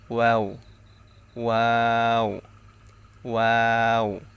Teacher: তালুর সঙ্গে লাগে নুন ওয়াও ওয়াও হচ্ছে দুই ঠোঁট গোল করিয়া ওয়াও এর উচ্চারণ করতে হবে দুই ঠোঁট গোল করিয়া